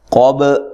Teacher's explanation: قاف کو موٹا ادا کرنا ہے، با پہ قلقلہ کرنا ہے. لہم مثل قولہم، سا کو نرم ادا کرنا ہے، لام کو باریک پڑھنا ہے.